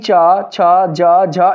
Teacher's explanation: वर्ग के वर्णों का उच्चारण जो स्थान है वो है तालू तालू से ही च छ ज झ इन सभी वर्णों का उच्चारण किया जाता है · च वर्ग के वर्णों का उच्चारण जो स्थान है वो है तालू तालू से ही च छ ज झ इन सभी वर्णों का